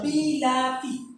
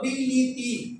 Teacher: বর্ষের বি রস্যিকার আছে, তর্ষিকাতিতেও রস্যিকার আছে, কিন্তু পরেরটা দেখো বিলিতি, তিনটাই রস্যিকার হয়ে গেছে। অর্থাৎ আগের ই এবং পরের ই এই দুটির প্রভাবে মাঝখানে আটাও ই হয়ে গেছে। এটাকে বলে মধ্যগত স্বর সংগতি।